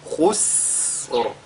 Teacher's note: la lettre Sin également est lue avec Al-Hams. Ce qu'il faudra donc qu'on fasse ici, c'est d'allonger la prononciation, n'est-ce pas, de ce signe-là.